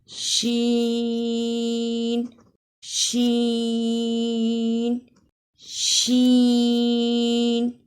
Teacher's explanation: शीन की अदा में जबान का दरमियान और इसके मुकाबिल तालू के मिलाप से अदा होता है